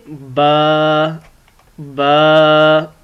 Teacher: बा दोनों होंठों को आपस में मिलाने से अदा होती है